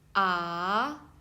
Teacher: And second tone, raising sound.